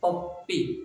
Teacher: प जब पढ़ेंगे तो दोनों ओठ आपके चिपक जाएगी